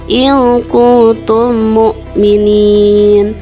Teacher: Panjangnya 2, 4 atau 6 harokat, tetapi lebih diutamakan dibaca 6 harokat. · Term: mad arid disukun